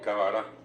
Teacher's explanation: en vez de cabra, metió una A en el medio y quedó cabara.